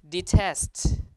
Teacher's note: the stress is test right so in this case again it has aspiration